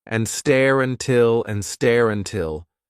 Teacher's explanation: It's not a vowel to vowel link. It's an R to vowel link, really.